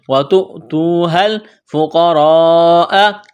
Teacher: قاف کو موٹا کرنا ہے، را الف مد زبر را، لمبی مد ہے، اس کو کھینچنا ہے 3 سے 5 الف کے درمیان